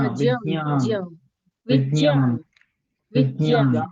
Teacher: इसको जब आप प्रोनाउंस करेंगे तो इतना मतलब शॉर्ट में इसको करना है कि वो आपको जा और या अलग अलग नहीं आए, क्योंकि ये संयुक्त अक्षर है, तो उसके जो विज्ञान, बीच का जो गैप है वो कम करना है आपको।